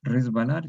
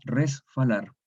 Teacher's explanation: Entonces, hay una asimilación en el sentido que la S ensordece a la B, le otorga el rasgo de ella, de ser sorda. Entonces la B se transforma en F, porque la F es la sorda correspondiente a la B que es sonora. Entonces queda, en vez de resbalar, queda resfalar.